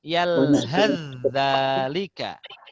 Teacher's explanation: Jadi maka kalau ada perjumpaan, contoh di sini ada yalhath dzalika, maka akan dibaca, cara bacanya adalah langsung masuk ke zal. Sa macam tak ada.